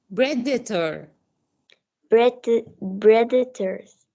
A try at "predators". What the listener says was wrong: excellent، برافو عليكي، ظبطتيها.